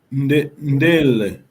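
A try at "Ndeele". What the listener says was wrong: Be careful. You have to. This is long vowel here. Ndele. Ndele is a verb. If you say ndele, ndele is it is a bird.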